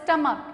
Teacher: at the last there is ch but the hissing sound is not there instead of hissing sound there is a sound of k